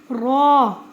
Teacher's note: اس کو لمبا نہیں کریں گے لیکن اس کو موٹا ادا کریں گے